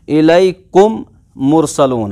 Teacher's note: तो जो पहला वाला मीम है इस मीम को दूसरे मीम में मिलाएंगे हम, दो मीमों का एक ही मीम बनाएंगे, इनको इनकॉर्पोरेट करेंगे, इस मीम को उस मीम में दाखिल करेंगे, शामिल करेंगे, मिक्स अप करेंगे। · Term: इदगाम